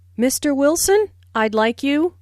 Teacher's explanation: notice the rising intonation on Mr Wilson which is used to address someone listen for the D in I'd like this means I would